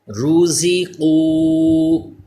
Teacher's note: زا کو تھوڑا دبا کے پڑھیں جیسے سیٹی پیدا ہو. را بھی پر پڑھا جائے گا کیونکہ پیش ہے. قاف حروف مستعلیہ بھی پر پڑھا جائے